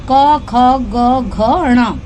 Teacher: जो हमारा फर्स्ट है, जैसा कि मैंने आपको ऊपर भी बताया था, कंठ से बोले जाने वाले, यानी कंठ गले की आवाज से बोले जाने वाले, उन्हें क वर्ग में बांटा गया है।